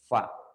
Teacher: Fa ini, ya, dia ada keluar, ya, keluar dari antara gigi dengan bibir